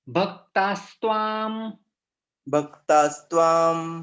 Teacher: विसर्ग चला जाएगा और उसकी जगह पे सकार आ जाता है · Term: संधियुक्त शब्द